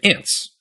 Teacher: If, for instance, you take the English word ant and you pluralize it, you get ants. There's an unvoiced T and an unvoiced S together.